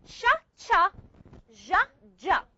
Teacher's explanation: Now, alveopalatals, we said we use the blade of the tongue to touch the area between the alveolar ridge and the hard palate. That's why we call them alveopalatals.